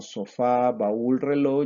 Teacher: Palabras como sofá, baúl, reloj llevan su mayor fuerza de voz en la última sílaba. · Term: palabras agudas